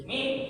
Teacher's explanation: Karena huruf mim itu syafawi itu artinya bibir. Mim itu tempatnya di bibir. Maka orang menyebutkan mim pasti nempel itu bibirnya.